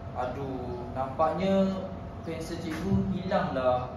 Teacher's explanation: kalau cikgu dalam keadaan yang sedih dan kecewa, cikgu akan gunakan intonasi yang rendah